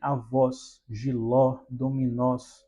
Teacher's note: Uma sonoridade mais aberta